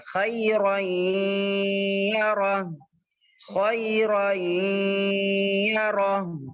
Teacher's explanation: نون کی آواز کو ناک میں روکنا ہے اور پھر ساتھ ہی آگے والے حرف سے یعنی یا سے ملا دینا ہے. اس کو ادغام مع الغنہ کہتے ہیں.